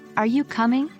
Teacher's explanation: uncertainty or interest for example in the question are you coming The Voice Rises on coming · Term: Rising intonation